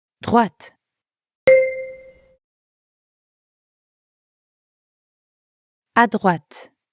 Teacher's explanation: make sure you're pronouncing the t sound at the end of droite.